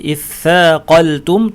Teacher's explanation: শেষের দিকে বাতাস ছেড়ে দেওয়ার কারণে সায়ের আওয়াজ আমরা পেয়ে যাচ্ছি